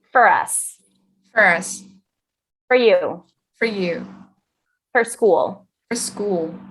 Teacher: And then this word, even though it looks like for with a circle lip, we don't pronounce it that way. We're going to keep our lip a little square and we're going to say fur. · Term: reduced form of for